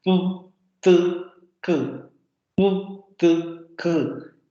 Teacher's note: Y aunque los órganos que se tocan son diferentes, los puntos de articulación son diferentes, estas tres consonantes siguen siendo oclusivas